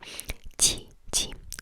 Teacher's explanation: So make it behind your teeth instead of ch, like towards your teeth. Make it slightly behind.